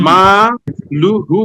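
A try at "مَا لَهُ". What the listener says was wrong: মা টান দিতে হবে, মা মধ্যে তবাই একালিপ, মালুহু।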